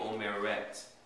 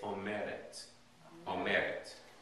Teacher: instead of putting the accent on the third syllable you're gonna put it on the second to the last syllable · The accent will be on that second to the last syllable.